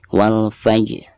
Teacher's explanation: Dan di sini ada huruf jim sukun, dan huruf jim ini merupakan salah satu daripada huruf qalqalah, sekaligus posisinya ada di tengah-tengah bacaan. Maka dihukumi qalqalah sugro, dan cara membacanya itu harus dipantulkan dengan suara pantulan yang tipis.